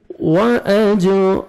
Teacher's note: جیم حروف قلقلہ میں سے ہیں، ڈبل ساؤنڈ آئے گا